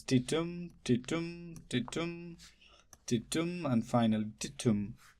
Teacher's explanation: Unstressed, stressed, unstressed, stressed, unstressed, stressed, unstressed, stressed, unstressed, and stressed. And the pattern goes up and down, up and down. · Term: iambic pentameter